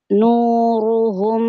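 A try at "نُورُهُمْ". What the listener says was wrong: jangan nuruhum tapi nuruhum hum kurang sempurna humnya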